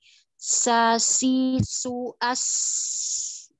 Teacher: safir itu suaranya tajam karena ada celah yang sempit itu